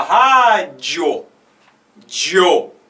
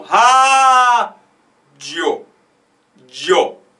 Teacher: primeiro vem uma semivogal, semivogal é um mais fraco dos dois, e depois vem a vogal, que é mais forte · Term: crescente